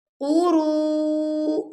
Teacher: جب آپ اس کو پڑھیں گے نا تو آپ کے لپس بالکل گول ہونے چاہیے